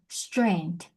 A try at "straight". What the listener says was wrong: Nope, no N. Straight.